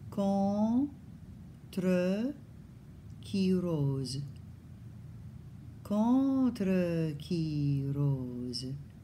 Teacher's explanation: So a word like contre, the nasalized on goes all the way to the T. There's no N with the tongue on the roof of the mouth.